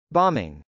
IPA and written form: bˈɑmɪŋ (bombing)